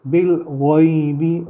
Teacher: غین کو تھوڑا سا موٹا کریں گے